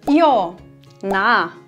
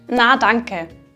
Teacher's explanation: Dabei wird der A-Laut weiter hinten im Mund und auch von der Zungenhöhe her höher gebildet. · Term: A-Verdunkelung